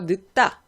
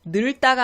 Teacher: 그리고 리을 기역 볼게요. 리을 기역은 여러분들이 리을로 많이 발음하는데 기역 발음이 원칙입니다.